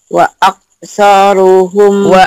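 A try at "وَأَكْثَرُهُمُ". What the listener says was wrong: saru, bukan soru, saru.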